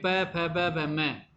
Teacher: पवर्ग में प फ ब भ म, इनका उच्चारण स्थान ओष्ठ होता है